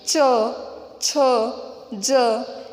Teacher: इस तालु व्यंजन में जो व्यंजन आते हैं च, छ, ज, इनका उच्चारण करते समय हमारी जो जीभ है वो कहाँ चिपकती है? तालु की तरफ चिपकती है, इसीलिए उसे तालव्य व्यंजन कहा जाता है